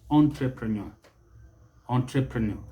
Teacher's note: the stress is on that last syllable